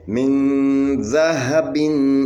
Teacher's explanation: ہے، ذال حروف اخفا میں سے ہے، یہاں پہ اخفا ہوگا، 2 حرکت کے برابر ہم غنہ کریں گے، اور غنہ ناک کے بانسے میں اس کا مخرج ہے، ناک میں اس کا مخرج ہے